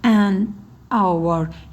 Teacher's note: H hərfini tələffüz etmədiyim üçün, hour şəklində tələffüz etdiyim üçün an artiklını işlətdim.